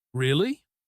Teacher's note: high pitch rising at the end. This means surprise.